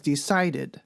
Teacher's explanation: the suffix e d makes an id sound and it also adds an extra syllable the final sound of decide is a d or t sound